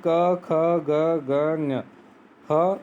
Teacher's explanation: इन वर्णों के उच्चारण में जिह्वा कंठ का स्पर्श करती है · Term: कंठीय